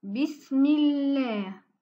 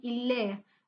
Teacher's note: La lettre Lam devient douce ou amincie lorsque le mot Allah est précédé d'une kasra. Exemple, Bismillah.